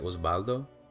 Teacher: Like a, the sound technically for a V in Spanish, in terms of the IPA, is like the same as the beta in Greek, where like B and V are kind of conflated in that language as well. It's like a bilabial fricative, I think it's called. So it's like not quite a B, not quite a V.